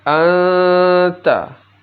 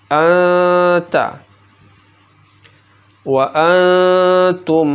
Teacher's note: nun mati atau tanwin apabila bertemu dengan huruf ta maka nun mati atau tanwinnya itu dibaca samar dan didengungkan. Contohnya ini an bertemu dengan ta dibaca anta jadi nun matinya